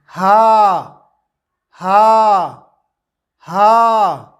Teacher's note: واو، دونوں ہونٹوں کو گول کرتے ہوئے اور درمیان میں تھوڑا مد کریں گے، کھینچیں گے، اور پھر آخر میں دونوں ہونٹوں کو گول کریں گے اور کہیں گے واو واو واو۔ ہا، زبان کی جڑ کو حلق کی طرف دبائے بغیر باریک اور بغیر رگڑ کھاتی ہوئی سانس کے ساتھ کہیں گے ہا ہا ہا۔